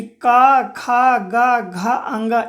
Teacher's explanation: इसका उच्चारण कंठ से होता है। इसीलिए हम लोग इसे कंठय वर्ण कहते हैं